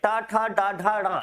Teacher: ट, ठ, ड, ढ, ड इनका उच्चारण स्थान क्या होता है? मूर्धा।